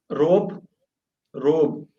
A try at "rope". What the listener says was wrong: Don't roll the R. You're rolling the R. You're going rope. just rope. Rope.